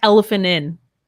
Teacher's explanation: We almost don't say that T. We would not say elephantin.